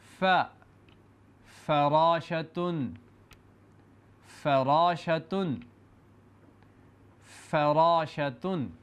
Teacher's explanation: اوپر والے سامنے کے دو دانت نیچے والے ہونٹوں سے لگا کر فا ادا کیا جاتا ہے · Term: حرف فا کی آواز